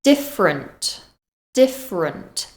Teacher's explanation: that final syllable is unstressed and it becomes a weak sound